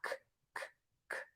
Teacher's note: And in some cases, it actually touches the back of the roof of the mouth. Air is going to puff out of the mouth. And so we're going to say that that's a stop consonant sound. Your voice box is not on. · Mouth is going to be open, and the tip of the tongue is going to be low or pointing down towards the bottom of the mouth. And the back of the tongue is going to be pulled way high up. And in some cases, it actually touches the back of the roof of the mouth. · And so we're going to say that that's a stop consonant sound. Your voice box is not on. Your larynx is not moving.